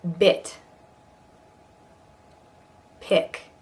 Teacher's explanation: this is a rather high vowel for American it so you'll want to lift your zygomatic arches that those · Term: short I, Short I